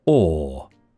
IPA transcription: ɔː